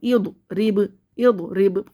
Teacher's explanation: پلٹ کے واپس آواز آئی تو یہ موٹا بڑا قلقلہ ہے